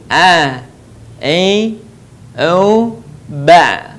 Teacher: Huruf A keluar dari tengah tenggorokan kita sama dengan cara kita melafalkan huruf H. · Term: huruf Ain